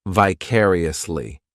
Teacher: this adverb has five syllables and the stress is on that second syllable